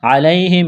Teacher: یا ساکن سے پہلے زبر، یا لین ہے، بغیر کھینچ کے پڑھنا ہے